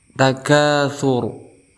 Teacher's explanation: Setelah itu ada takatsur. Ada ra yang disukunkan karena diwaqafkan, kemudian sebelumnya berharokat dhammah, maka kita hukumi sebagai tafkhim, artinya tebal.